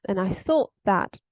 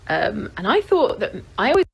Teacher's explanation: She doesn't pronounce the t at the end of thought. She says, and I thought that.